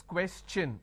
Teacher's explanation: When I have the word question, the tion becomes ch, n. So it becomes question.